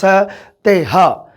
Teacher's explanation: ਖੈਵੇਂ ਵਿਅੰਜਨ ਪੰਜਾਬੀ ਵਿੱਚ ਸਾ ਦੇ ਪੈਰ 'ਚ ਬਿੰਦੀ ਵਾਲਾ ਸ ਤੇ ਹਾ, ਇਹ 3 ਆ ਜਿਹੜੇ ਇਹ ਸਾਡੇ ਖੈਵੇਂ ਵਿਅੰਜਨ ਹਨ। ਇਹਨਾਂ ਦੇ ਉਚਾਰਨ ਵੇਲੇ ਸਾਹ ਦੀ ਹਵਾ ਉਚਾਰਨ ਅੰਗ ਦੇ ਨਾਲ ਖਹਿੰਦੀ ਹੈ, ਰਗੜ ਖਾਂਦੀ ਹੈ